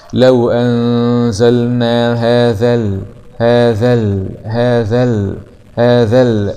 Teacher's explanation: همزة وصل وسط الكلام لا تنطق ويبدأ باب الفتح، لام سكون قمرية مظهرة. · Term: همزة الوصل